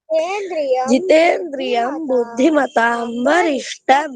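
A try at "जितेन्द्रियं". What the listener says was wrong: నువ్వు తప్పే పలుకుతున్నావు. జితేంద్రయం అంటున్నావు. జితేంద్రియం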